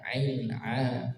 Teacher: keluar dari tenggorokan bagian tengah Ain epiglotis bagian tengah tenggorokan kita Ain a Wal setelahnya ada